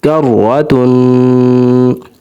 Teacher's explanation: کاف زبر را کر را زبر را کر را تا دو پیش تن کرتن، را کے اوپر زبر ہے اس لیے را کو موٹا کیا جائے گا، اور تا کے اوپر دو پیش ہیں، تنوین ہے تو تا کے اوپر غنہ ہوگا کرتن۔